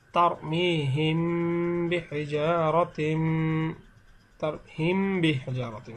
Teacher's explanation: মিমে সাকিনের পরে যদি বা আসে, তাহলে মিমে সাকিনকে গুণনা করে পড়তে হয়। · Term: মিমে সাকিনের ইকফা